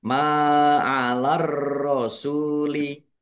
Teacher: Ma'alar rasuli mim fathah alif mat tabi'i panjang 2 harokat. Ar-rasuli alif lam samsiah karena tidak dibaca langsung masuk ke huruf berikutnya yaitu ro, ditandai roknya ada tasdidnya.